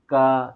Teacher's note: क वर्ग का उच्चारण स्थान कहां से होता है कंठ से होता है